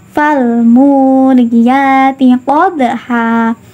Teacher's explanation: Pada lafal qadha, dalnya ini berharokat sukun, terletak di tengah kalimat. Makanya huruf dalnya ini dibaca memantulkan secara ringan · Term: qalqalah sughra